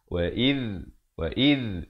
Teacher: Makhrajnya kalau boleh saya tunjuk huruf zal. Makhrajnya di hujung lidah ini kita keluar di antara 2 gigi, menyentuh 2 gigi atas yang depan ini.